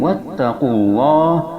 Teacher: lafaz Allah dibaca tebal, hukumnya adalah tafhim, dikarenakan lafaz Allah sebelumnya ada dhammah